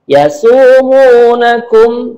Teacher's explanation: sin dibaca tipis karena tidak ada titik 3